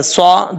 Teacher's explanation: صاد فل مت پڑھا جائے گا، حروف مستعلیہ میں سے ہے